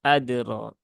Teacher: kolkolah dalnya itu jangan dibaca berlebihan ya, tapi cukup disentuhkan saja ke makrotnya, kemudian segera dilepas kembali